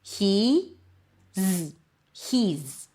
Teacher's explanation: is reduces to z. Notice it's a Z sound. It's not an S,